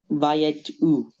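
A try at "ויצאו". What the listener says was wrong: Okay, so let's just connect this together. Okay, again, there's a shva here.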